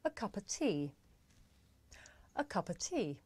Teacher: The words a and of become schwa, a. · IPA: /ə/